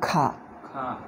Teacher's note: ವ್ಯತ್ಯಾಸ ಗೊತ್ತಾಯ್ತು ನೋಡು ಮೊದಲು ಕೇಳು ಮೊದಲು ಕೇಳು ಕ ಖ ವ್ಯತ್ಯಾಸ ಗೊತ್ತಾಯ್ತಾ ಖಲ್ಲಿ ಉಸಿರು ಹೆಚ್ಚು ಬರ್ತಾ ಇದೆ ಹ ಸೇರಿಕೊಂಡಂತೆ